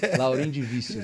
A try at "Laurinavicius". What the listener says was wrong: Na verdade, a pronúncia é Laurinavicius, porque o vícios é Vicius. Laurinavicius. É, Laurinavicius.